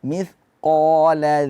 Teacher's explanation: Mithqa, qa dibaca tebal, jangan dibaca mithqa. Qa huruf tebal. Isti'ala, suara mengarah ke atas.